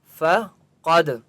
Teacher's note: دال کے اوپر قلقلہ ہوگا اور قاف کو موٹا پڑھیں گے کیونکہ قاف مستعلی میں سے ہے